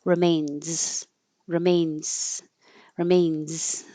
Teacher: But usually when z is at the end of a word, we're not keeping our voicing going the whole time and we start turning off our voice before we're done with the airflow and it turns into an s.